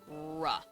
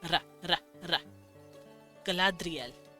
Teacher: His R's were taps, so ri instead of re. No rhotic R.